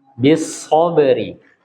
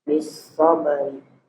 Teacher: ini berkaitan dengan hamzah wasl posisi di tengah, maka dia tidak dibaca.